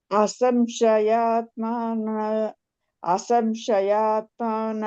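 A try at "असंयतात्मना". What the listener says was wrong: ಅಸಂಶಯ ಅಲ್ಲ ಮಾತಾಜಿ ಅಸಂಯತಾತ್ಮನ ಅಸಂಯತಾತ್ಮ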